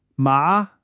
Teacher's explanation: Now for the second tone. This one goes up. The best way to think about it is like when you ask a question.